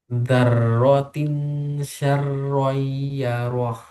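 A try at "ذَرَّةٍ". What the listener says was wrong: Ya, zalnya jangan da, dar, za, za. Za.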